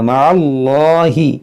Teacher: یہاں اس میں جلالت سے پہلے زبر ہے، اس کو ہم موٹا پڑھیں گے